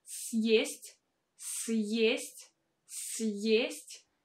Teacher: you can clearly hear this sound Y, Y, because we have this vowel Y that stands just after a hard sign, and that is why we need to pronounce it with a combination of sounds Y and E.